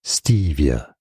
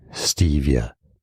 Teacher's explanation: stress on the first syllable three syllables overall stress on the Ste Stevia it's easy Stevia and now you